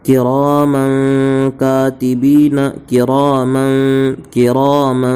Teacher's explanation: تنوین کے بعد حروف اخفا کے 15 حرفوں میں سے کاف آیا ہے، اس لیے تنوین کی آواز کو ناک میں چھپا کر پڑھیں گے